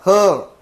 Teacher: मग आता महा म्हणजे मोठा आणि प्राण म्हणजे वायू बरोबर तर याचा उच्चार करतानी मोठ्या प्रमाणात वायू काय केला जातो सोडला जातो तुम्ही श्वास घ्या मोठा घ्या आणि आणि बोला हं जेवढा श्वास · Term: महाप्राण